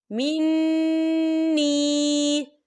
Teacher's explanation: وَمَن لَّمْ يَطْعَمْهُ فَإِنَّهُ مِنِّي، یہ دیکھیں منی، یہاں پر یا مدہ ہو رہا ہے، یا ساکن سے پہلے زیر ہے اور اس پر چھوٹی سی مد بھی ہے، تو ہم اسے 3 یا 4 حرکت کی برابر کھینچے پڑھیں گے